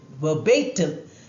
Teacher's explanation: stress on bay, the second syllable.